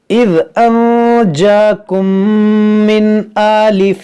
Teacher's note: मीम साकिन के बाद दूसरी मीम यहाँ पर इदगाम शफवी होगा, यानी यहाँ पर गुन्ना करेंगे।